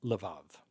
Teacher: the bet in both cases is pronounced as a V, like in victory, because it does not have a dagesh or a dot in it